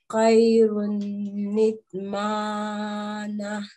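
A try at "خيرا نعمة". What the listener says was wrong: This is a separate alif, not an alif madda. And you have to make a nasal sound over here as well. But you did the noon kutni rule perfectly, mashallah.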